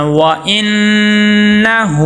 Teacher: ہا کے اوپر الٹا پیش ہے، ایک الف کے برابر لمبا کریں گے